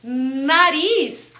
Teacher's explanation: aqui no n a ponta da língua vai tocar raiz dos dentes de cima